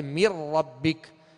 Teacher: میم کو را سے ڈائریکٹ ملائیں گے، اور نون اس میں داخل ہو گیا